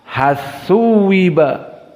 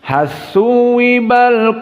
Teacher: dibaca lam masuk kepada tsa dan ini yang dinamakan dengan Idgham dengan tasdid